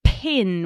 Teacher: pin with that like real airy, puffy sound that comes out